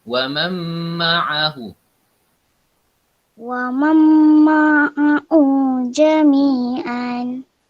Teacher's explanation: Nun mati bertemu dengan mim. Idgham ma'al gunnah.